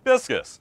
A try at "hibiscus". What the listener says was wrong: I love the separation of the words there. It's hibiscus. Say it with some oomph, man.